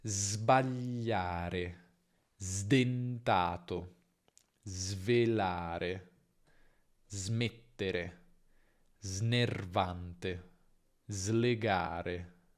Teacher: Quando invece è seguita da una consonante sonora, quindi B, D, G, V, M, N, R, L, G, diventa Z.